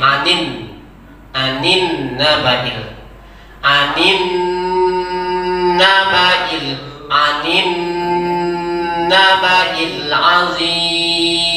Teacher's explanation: Dan dengungkan, tahan dengung itu selama 3 harokat.